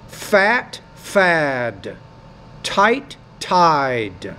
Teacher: When the T's at the end, the vowel which precedes it is shorter, as in the word fat. When the D's at the end, the vowel which precedes it's longer, as in the word fad.